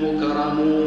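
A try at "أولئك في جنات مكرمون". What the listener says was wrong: مش مكرمون مك صارت مقلقله مكرمون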